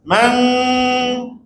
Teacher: Lepas tu bila kita rendahkan langit lembut ke arah pakai lidah, suara ni akan mengalir ke hidung lagi banyak. Maka jadilah man. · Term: dengung